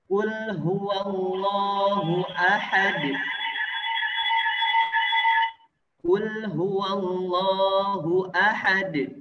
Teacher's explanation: Maka kita pantulkan bunyi suara dalnya ketika dalam keadaan sukun.